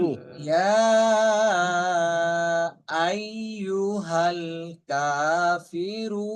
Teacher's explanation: قل قل قل يا يا أيها أيها الكافرون যে আইয়ু, আই হামজাটা শক্তভাবে ধরতে হবে।